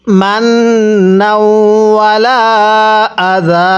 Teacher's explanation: এই লামের মধ্যে আমরা 3 আলিফ টান দিব